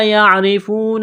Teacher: را کے نیچے زیر ہے، را کو باریک کرنا ہے